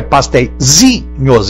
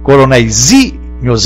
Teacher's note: Sílaba forte é pastéisinhos, é o zi, coronéisinhos é o zi.